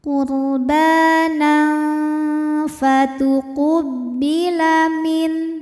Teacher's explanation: Karena ada tanwin fathah menghadapi huruf fa, maka tanwinnya dibunyikan samar-samar, siap-siap menuju huruf fa disertai dengung. Samar dan dengungannya sama besar ya. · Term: ikhfa ausat